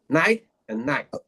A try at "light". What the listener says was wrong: That sounds to me like both same words. You said the same word 2 times, not 2 different words. Light.